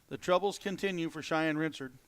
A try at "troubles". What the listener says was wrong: No, not the trebles. The troubles. Your Ozarkian accent?